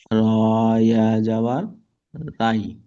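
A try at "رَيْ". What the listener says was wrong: রাই নই, রয়। রয়, র। র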